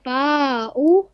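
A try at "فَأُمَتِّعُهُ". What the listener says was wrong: बेटा फाऊ नहीं पूरा पढ़ा करें बेटा, कंप्लीट लेटर पर। फाऊ क्या होता है? फ़उमत्तिऊहु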